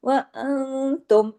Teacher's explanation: जुड़ेगा, दो मर्तबा आवाज आनी चाहिए, ला तक़तुलु स्वैदा, व तुम, नून साकिन के बाद ता है, इख्फा हकीकी, गुन्ना कामिला